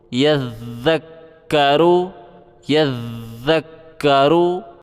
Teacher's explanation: یا کو ذال کے ساتھ ملانا ہے زبان باہر نکال کے، اور ذال کو کاف کے ساتھ ملانا ہے سختی کر کے